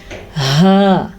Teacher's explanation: ہا کا تلفظ حلق کے آخری حصے سے نکلتا ہے